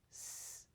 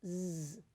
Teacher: s is a voiceless sound made with the vocal folds held open, and z is a voiced sound where we vibrate the vocal folds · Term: voiced and voiceless